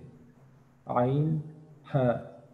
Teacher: দুই নাম্বার মাখরাজ হলকের মধ্যখান হইতে · কণ্ঠনালী বা হলকের মধ্যখান হইতে আইন হা তিন নম্বর